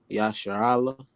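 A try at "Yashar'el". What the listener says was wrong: Perfect. Yasha Allah.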